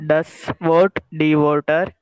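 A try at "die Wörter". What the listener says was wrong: Werter. हाँ Werter क्यों? Because O umlaut लगाया है.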